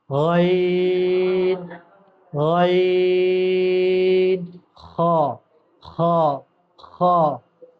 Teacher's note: ادنائے حلق، یعنی حلق کا منہ کی طرف والا حصہ، منہ ہے نا ادھر پاس میں ہے نا، یہاں سے نکلتا ہے، اس جگہ سے، یہ اونچا والا ہڈی سے اور آگے نکلتا ہے، ہلکا سا جس جگہ گڈھا ہے وہاں سے نکلتا ہے۔